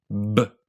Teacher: The thing that makes a B and the thing that makes a B a voiced consonant is the fact that the buzzing that happens goes on before your lips pop open.